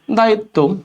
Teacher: বফলা যদি শব্দের শেষে থাকে বফলা উচ্চারণ না হয়ে যে বর্ণের সাথে আছে ওটা দ্বিবার উচ্চারণ হবে